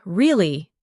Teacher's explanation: your voice goes up slightly at the end